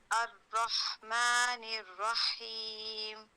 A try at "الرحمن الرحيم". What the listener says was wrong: देखिए आपकी जबान मखरज पे है बस थोड़ी सी पीछे पढ़े लाम अल रा अर अहसनती الرحمن الرحيم